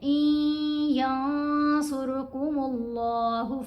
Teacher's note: مشدد یا ہے نا، تو یا حروف یرملون میں سے ہے، اب نون نہیں آواز دے گا، حمزہ کو ہم نے یا کے ساتھ ملانا ہے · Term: نون خاموش